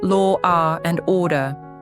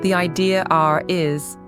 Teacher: We insert an R to smooth the transition between the R and A vowels. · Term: intrusive R